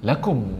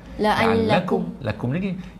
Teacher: Lakum mim tanda sukun tak dengung lagi.